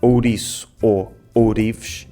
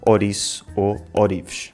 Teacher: No entanto, em Lisboa, às vezes levamos isto um pouco longe demais e transformamos o ditongo OU em O, sobretudo quando falamos rápido. Em vez de dizermos ouriço ou ourives, dizemos ouriço ou ourives.